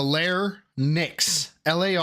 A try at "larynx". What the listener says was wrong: It's larynx. The Y is before the N.